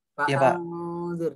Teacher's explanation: Fa'anzir, maka terdengar seperti padahal itu bukan dengung ya, namanya disamarkan. Oke, memang terdengar selintas seperti dengung, tapi yang benar samar. Nah, ini hukumnya adalah ikhfa ya ya.